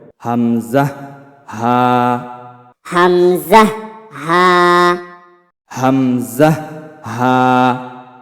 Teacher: হলকের শুরু হইতে অর্থাৎ কণ্ঠনালীর শুরু হইতে উচ্চারিত হয় হামজা হা।